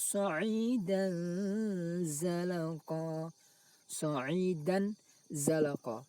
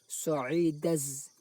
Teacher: suara tanwin tersebut dibaca samar, yaitu tidak dibaca idhar jelas, sa'idan juga tidak dibaca idham, yaitu dimasukkan ke huruf zai, sa'idaz, akan tapi antara idhar dan idham samar, sa'idan, lalu didengungkan, sa'idan. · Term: ikhfa